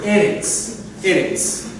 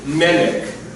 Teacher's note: the emphasis, when you have the double short E, the emphasis will go on the first, almost always will go on the first syllable.